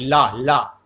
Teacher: जब आप ला बोलते हैं तो जीभ जो है आपकी ला दांत से टकराती है, दंत से हो जाएगा। ला का उच्चारण स्थान दंत से होता है।